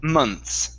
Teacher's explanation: you want to pronounce it without the th